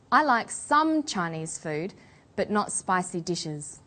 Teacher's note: about a restricted or limited amount of something we put the stress on the word some